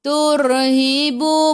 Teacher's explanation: Sebelum ra baris depan kena baca ra tu tebal. Turhibu. Bu 2 harakat ada.